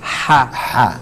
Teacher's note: so it's pronounced from the back of the throat. From the back of the throat, yes. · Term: soft ha